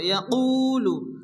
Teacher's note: ইয়াকুলু, কু ওয়া মাদ্দা এক আলিফ টেনে পড়তে হবে